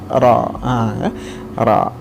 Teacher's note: Kalau menggunakan pendapat ini, maka huruf ra-nya itu otomatis akan menebal ya teman-teman, meskipun agak sedikit sulit. Jadi ditarik ke belakang sedikit ujung lidah kita.